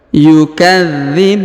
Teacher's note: huruf bu dipanjangkan boleh 2, boleh 4, boleh 6 harokat karena di depan huruf bu terdapat waw sukun sebelum huruf pemberhentian, dan huruf pemberhentian huruf na disukunkan atau dimatikan.